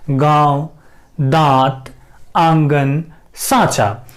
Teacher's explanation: ऐसे स्वर जिनका उच्चारण नाक और मुंह से होता है और उनके उच्चारण में लघुता होती है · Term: अनुनासिक स्वर